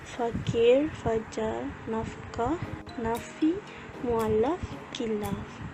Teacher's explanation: Cara penghasilannya ialah gigi atas diletakkan pada bibir bawah dengan tekanan yang mencukupi. Udara yang keluar melalui rongga mulut mengalami geseran disebabkan ada sempitan pada bibir gigi. Lelangit lembut dinaikkan untuk menutup rongga hidung. Pita suara tidak bergetar.